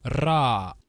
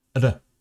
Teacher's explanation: In Portuguese, there used to be both an alveolar trill, ra, and an alveolar tap, r.